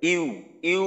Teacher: ইউ বললে হামজার মাখরাজটা ব্যবহার হয়